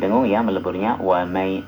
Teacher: Jadi nun mati ketemu ya disertai dengung ya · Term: idgham biguna